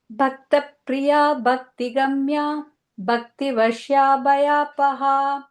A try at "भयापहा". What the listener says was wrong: Yeah, this bhaya, paha, and all little more stress for the bhas.